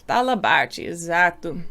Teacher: in Rio, you would say it with this air, like ehi kind of sound, almost guttural, but not quite